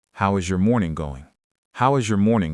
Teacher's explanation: The word going actually steps down in pitch. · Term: falling intonation